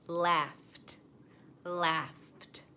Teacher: the gh sound in laugh makes the f sound which is unvoiced so it would also take the edie for pronunciation laughed laughed